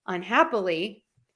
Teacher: If I end the un and the ly, unhappily, my hap is still stressed.